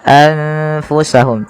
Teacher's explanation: nun sukunnya bertemu dengan huruf fa, maka nunnya disamarkan kepada huruf fa. Maka menjadi anfusahum tidak lagi dengan jelas suara nunnya anfusahum tapi samarkan ke huruf fa. · Kemudian melafal anfusahum, di sini ada bacaan ikhfa yang terjadi apabila adanya nun sukun bertemu dengan huruf ikhfa. Dan di sini ada nun sukunnya bertemu dengan huruf fa, maka nunnya disamarkan kepada huruf fa.